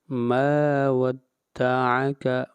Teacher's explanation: ما کو لمبا کریں گے 1 الف کے برابر، مد اصلی ہے، الف مدہ ہے۔